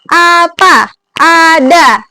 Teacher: vokal A ini bisa kita lihat posisi lidahnya itu rendah bawah ya, menggunakan lidah bagian depan dan posisi mulut terbuka.